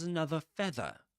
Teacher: Another feather without pronouncing the final R